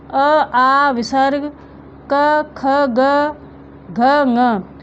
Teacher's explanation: तो यह जितने भी वर्ण हैं इनके उच्चारण स्थान कंठ है